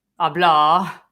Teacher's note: The British people tend to make the last vowel longer, hablar.